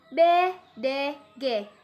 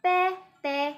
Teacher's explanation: berdasarkan pita suara yaitu yang bersuara B G dan yang tak bersuara yaitu P T